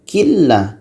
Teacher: kalau nunnya masih terdengar itu masih salah